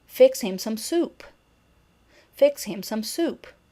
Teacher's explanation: in the case of commands we also have fallen intonation